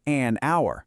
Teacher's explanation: And you use an before vowel sounds, like an hour, because that H is completely silent